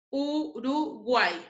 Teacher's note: La Y, cuando está al final, tiene sonido vocálico de I. Por lo tanto, se le considera como una vocal cerrada. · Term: triptongo